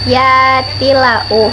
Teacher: Yatilau, hukumnya idgham bila gunah karena huruf ta berharkat kasroh tanwin bertemu huruf lam tasdid, dibaca lebur tanpa dengung dan bunyi tanwin menjadi hilang